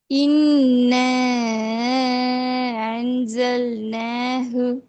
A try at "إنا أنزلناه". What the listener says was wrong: இல்ல, அலிஃப் வரல. இன்னால அலிஃப் வந்துச்சு.